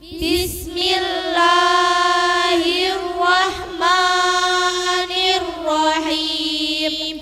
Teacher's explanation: Bismi, bi dengan menahan desisan angin. Sin dibaca tipis dan dengan desisan yang lepas.